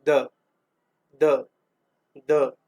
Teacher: द बोलने पे आपकी ऊष्मा नहीं निकल रही है, लेकिन गर्दन में आपको कंपन उत्पन्न हो रहा है, तो ये द सघोष हो जाएगा